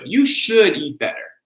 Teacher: we're going to stress the should